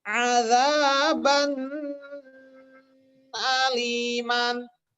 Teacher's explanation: huruf hamzah dibaca jelas A-nya, ya dibaca jelas A-nya. Nggak boleh dengung